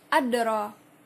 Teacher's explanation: hukum bacaan qalqalah sugro karena di dalam kalimatnya terdapat dal mati dan cara membacanya membalik membentuk huruf dal.